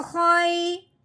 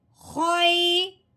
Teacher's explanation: خو کو یا کے ساتھ ملانا ہے، لیکن نرمی کے ساتھ اور بغیر کھینچے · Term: لین